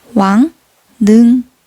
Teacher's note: 앞음절로 인해 뒷음절의 리을이 변하는 순행동화가 일어났음을 보실 수 있습니다